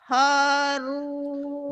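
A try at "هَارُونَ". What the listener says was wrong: Bukan ho, tapi ha.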